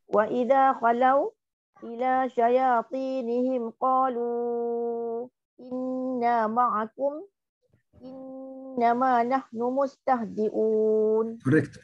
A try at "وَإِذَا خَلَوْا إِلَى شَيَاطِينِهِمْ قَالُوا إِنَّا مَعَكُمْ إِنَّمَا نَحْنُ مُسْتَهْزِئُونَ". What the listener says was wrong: Correct.